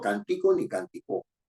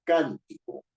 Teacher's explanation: la fuerza de la voz está en la anterior a la penúltima está en la antepenúltima